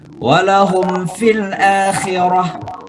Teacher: mimati ketemu fa, izhar syafawi